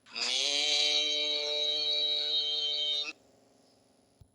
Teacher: এই হরফটি বলতে উভয় ঠোঁট মিলিয়া শুরু হবে, উভয় ঠোঁট মিলিয়া শেষ হবে, চার আলিফ পরিমাণ লম্বা হবে, ওই সময়টা মুখ খুলে থাকবে।